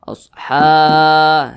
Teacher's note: Maka huruf H ini dibaca panjang. Namanya mad tabi'i. Panjangnya 2 harokat.